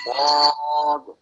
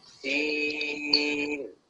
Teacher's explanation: for sword, he rounds his mouth, and for seen, he flattens his mouth so that the upper teeth and lower teeth are touching. So it makes a smile face.